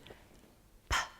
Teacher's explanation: Upper and lower lip. P is unvoiced.